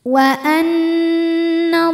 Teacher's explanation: Ada hukum gunnah musyaddadah atau wajibul gunnah atau gunnah aja ya, atau nun musyaddadah. Karena nun ada tasydidnya. Cara membacanya adalah berdengung.